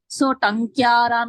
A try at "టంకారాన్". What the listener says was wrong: యకారం ఎందుకు పలుకుతున్నారు? టంకారాన్ టంకారాన్. యకారం అసలు రాదు. మనం అనడం ఆ అక్షరాన్ని విడిగా పలికినప్పుడు ఇన్యా అంటాం గాని ఆ యకారం పలకకూడదు అసలు.